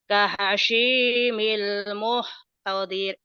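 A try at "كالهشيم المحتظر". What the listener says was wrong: kahashimil muhtazir, bukan muhtadir, muhtazir, muhtazir. Kahashimil muhtazir.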